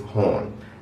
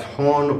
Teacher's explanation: So the word for here in Palestinian Arabic is hon. Again, that's hon with the soft H and a long O sound